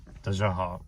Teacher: the second syllable, 大 家, I don't make the Y sound at all